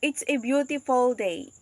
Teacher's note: the sustained juncture here is after the words a separating the indefinite article from the adjective